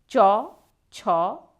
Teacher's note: জায়গাটাকেই বলা হচ্ছে তালু এই যে ব্যঞ্জন ধ্বনি উচ্চারণ করার সময় জীব ওই কঠিন বা শক্ত তালুকে স্পর্শ করে শ্বাস বায়ুকে আংশিক বাধা দেয় তাকে বলা হয় তালব্য ব্যঞ্জন ধ্বনি